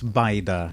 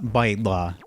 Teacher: Arabic has that l sound, and Maltese doesn't. Maltese lost it. So it's baida, not baidla.